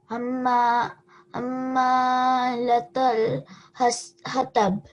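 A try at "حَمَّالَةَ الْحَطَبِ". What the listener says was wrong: A little bit more of a vibration. Hammalatal hatab.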